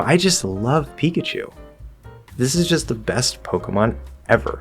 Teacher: might be happy excited right all these sort of positive emotions i'm going to use a lighter higher sort of pitch or tone throughout what i'm saying · it's very light it's up it's kind of punchy there's lots of variation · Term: upbeat